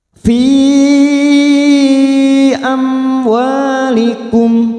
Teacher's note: mim sukun idhar safawi, kita baca jelas tanpa mendengung karena bertemu waw. Mim sukun mendengung hanya bertemu dengan 2 huruf yaitu mim dan ba.